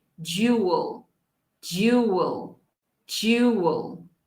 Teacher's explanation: A gente vai começar com o som de j, e depois vai para will, jewel, jewel, ok? So we're going to use the dark L at the end. Nós vamos terminar com nossa língua atrás de nossos dentes